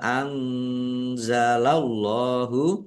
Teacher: Allahnya dibaca tebal karena harakat di depannya fathah · Nun sukun bertemu dengan huruf za. Bacaan ikhfa dibaca samar-samar.